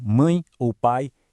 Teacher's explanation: O som de an e de ai é pronunciado em um único impulso de voz de uma vez só. As vogais ficam juntas. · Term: ditongo